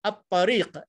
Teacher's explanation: lam dihilangkan, terus dimasukkan dalam huruf ta